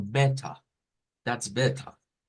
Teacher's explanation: la r no suena y aparece un sonido que se llama shua que es como e e y ese sonido cambia en el · En un inglés británico, por ejemplo, se nos dice que la R no suena y aparece un sonido que se llama schwa · los acentos no róticos significa que la R, ¿verdad? La R al final no suena.